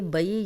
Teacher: بئی یا لین ہے, جزم والی یا, پیچھے زبر, تو بغیر کھینچے نرمی سے پڑھیں گے